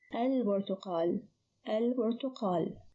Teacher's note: So here the lam is pronounced, the ba is unchanged, so the ba is one of the moon letters.